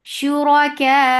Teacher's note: So when this combination comes for the waqf, you are giving nabar on hamza and nabar is jump of sound.